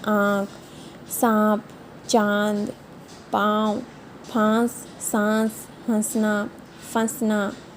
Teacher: और बच्चों जो आपकी ये ऊपर वाली मात्रा होती है ना, इसको अनुनासिक बोलते हैं, क्योंकि इसमें आपकी नाक का प्रयोग होता है